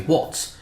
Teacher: It's not z anymore. It's not voiced. It became what's, voiceless. Why? is because the t sound at the end of what is voiceless.